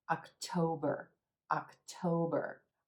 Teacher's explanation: another three syllable word emphasis on this second syllable and the Oh as in gold so it's not October October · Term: O as in gold